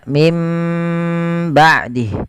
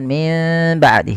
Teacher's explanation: kita mengambil yang idbaak yaitu menempelkan bibir itu secara rapat maka mim ba'dih bukan Min ba'di tapi dia m Ya ditahan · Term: idbaq